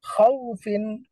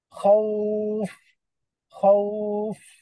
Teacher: খাউফিন কোনো টান নেই, কিন্তু ওয়াকফ করলে খাউফ